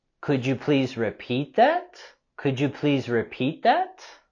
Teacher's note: And we're going to have our rising intonation here with this question.